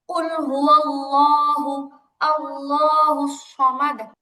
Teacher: আল্লাহ শব্দের লামগুলো মোটা হবে আপু। ডানে জবর মানে আল্লাহ শব্দের ডানে জবর পেশ থাকলে তো লাম মোটা হয়।